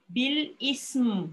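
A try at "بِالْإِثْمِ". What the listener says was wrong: Ah, tapi sa jangan, jangan, memang kena ada mim. Sa bukan sin, eh. Jangan bil ism. Dia tak boleh bunyi desiran sin. Bil ism. Sa ujung lidah keluarkan. Ah, jangan ismim. Bukan ismim. Mim tu huruf. Mim adalah huruf. Tapi bila dia dah berbaris, matikan. Bil ism.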